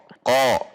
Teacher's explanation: qa dengan menegangkan pangkal lidah isti'la